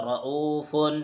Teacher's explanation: یہاں بھی را کے اوپر زبر ہے تو را کو پر پڑھا جائے گا